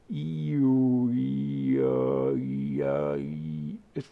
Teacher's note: my tongue is going up for the E and that makes the higher higher frequency